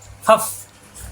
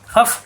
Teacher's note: উপরের দুই দাঁতের আগা নিচের ঠোঁটের ফেটে লাগবে